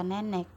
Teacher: Tengah bawah depan tak bundar